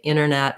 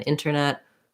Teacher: when there's an NT combo, a lot of times you'll hear people leave that T out.